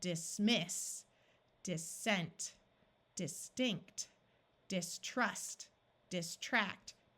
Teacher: In all of these words, we have prefixes, and prefixes and suffixes are rarely accented in English words. So all of these words are two syllables, and the accent will be on the second syllable. So that means we are going to say it a little louder and more clearly.